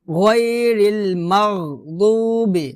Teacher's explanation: আপনি যখন দদ উচ্চারণ করবেন তখন আপনি খেয়াল রাখবেন যাতে আপনার জিহ্বার আগা সামনের দাঁতের সাথে যাতে না লাগে, জিহ্বার আগা সামনের দাঁতের সাথে লাগবে না যখন আপনি দদ উচ্চারণ করবেন। তো দদ কোথায় লাগবে, মানে জিহ্বার গোড়ার কিনারা উপরে মারি দাঁতের গোড়ার সঙ্গে লাগবে।